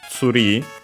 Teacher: But yeah, either way, tree from English is pronounced in Japanese as tsuri. Its accent is on the ri as expected